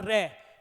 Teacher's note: र के उच्चारण में जीभ का अग्र भाग लुड़क है इसलिए र को लुंठित व्यंजन भी कहते हैं